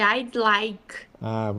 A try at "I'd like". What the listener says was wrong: Then and that's a very common pronunciation problem. You need to push the D. I'd like. Your tongue has to touch. Yeah, your tongue has to touch up on the roof of your mouth. I'd like. I did it a little bit exaggerated when I said I'd like, but what your tongue has to close that gap there.